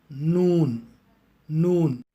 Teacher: ஆங்கிலத்தில் என் என்ற எழுத்தும் தமிழில் 2 சுழி நாவும் ஹிந்தியில் உள்ள நாவும் அரபி மொழியின் நூனை போன்றதுதான், எந்த வித்தியாசமும் இல்லை. நூனை உச்சரிப்பதற்காக உங்கள் நுனி நாக்கை வாயின் முன் மேற்பற்களின் பின்னுள்ள ஈறுகளின் மீது வைத்து கூறவும்